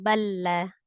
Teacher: pertemuan antara dua huruf yang sama makhraj dan sama sifat karena hurufnya sama maka dihilangkan Huruf pertamanya langsung ditasdid langsung diidamkan ke huruf lam yang kedua langsung balla ya lanya